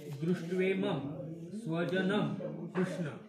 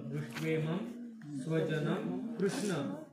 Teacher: दोन्ही अनुस्वाराचा म असं उच्चारण होतं